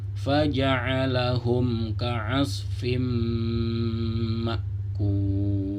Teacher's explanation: ka'asfim itu ada fa yang berbaris kasratain bertemu dengan mim, maka dia didengungkan karena hukumnya sama seperti hijaratim tadi, yaitu idgham bi gunnah, masuk lalu didengungkan.